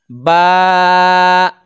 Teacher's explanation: तो यह तर हिस्सा होता है जो गीला रहता है। दोनों होठों के तर हिस्सा से इसको बा को अदा किया जाता है · تو یہ تر حصہ ہوتا ہے جو گیلا رہتا ہے۔ دونوں ہونٹوں کے تر حصہ سے اس کو با کو ادا کیا جاتا ہے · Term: حروف شفویہ